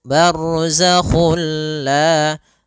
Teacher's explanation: Nah, idgham bilaguna juga sendiri itu idgham yang kita namakan juga idgham kamil, yaitu kita memasukkannya secara utuh, secara seluruhan kepada huruf lam sehingga tidak menyisakan sedikit daripada bunyi huruf nunnya ya. Sehingga langsung masuk barzakhulla dan dia bila ghunah berarti tidak boleh disertai dengan ghunah.